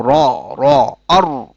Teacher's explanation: জিহ্বার আগের অংশের পিঠ এবং সোজা উপরের তালু এখান থেকে র উচ্চারিত হয় · জিহ্বার অগ্রভাগের পিঠ এবং সোজা উপরের তালু এখান থেকে উচ্চারিত হয় র, যেমন আর। জিহ্বার আগের অংশের পিঠ, হ্যাঁ, এবং সোজা উপরের তালু এখান থেকে র উচ্চারিত হয়, যেমন র, র, আর, আর।